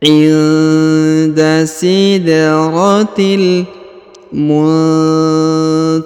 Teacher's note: Huruf nun sukun bertemu dengan ta, maka didengungkan dan disamarkan.